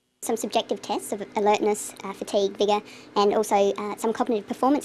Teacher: she uses rising and falling tones and a tone that's neither rising nor falling